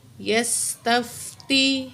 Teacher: سین میں سیٹی والی آواز ہوگی. تا زبر فا تف، تا زیر تی یس تف تی.